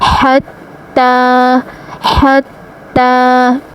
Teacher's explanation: ألهاكم التكاثر حتى حتى ح زبتا، حتی کھڑا زبتا، حتى تا کے اوپر کھڑا زبر ہے، کھڑا زبر کو بھی 1 الف کے برابر کھینچ کر پڑھا جاتا ہے، اور تا کو خوب جمع اور سختی سے پڑھیں گے کیونکہ تا کے اوپر ہے تشدید۔ تشدید والے حرف کو 2 بار پڑھا جاتا ہے، ایک بار ح سے ملایا اور ایک بار تا کی خود کی حرکت کے مطابق۔